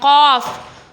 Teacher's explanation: یہ آپ نے حلق سے ادا کرنا ہے